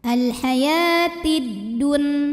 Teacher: Karena alif lam menghadapi huruf syamsiyah yaitu dal, maka alif lam tidak dibaca atau diidghamkan ya, idgham syamsi.